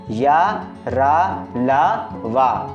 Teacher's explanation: इनका उच्चारण करते समय जीभ मुख के किसी भाग को पूरी तरह स्पर्श नहीं करती मतलब हल्का सा स्पर्श करती है पूरी तरह स्पर्श नहीं करती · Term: अंतस्थ व्यंजन